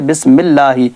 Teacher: اب اللہ کے لام سے پہلے زیر آ گیا نا تو یہ اللہ کا لام باریک ہوگا، اور اگر اس سے پہلے زبر آ جائے ہو اللہ، اس سے پہلے زبر آ جائے اللہ کے لام سے پہلے تو لام موٹا ہوگا، لیکن یہ اللہ یا اللہم کا لام نہیں ہے، اس لیے ہر صورت میں ہم اس کو باریک ہی پڑھیں گے۔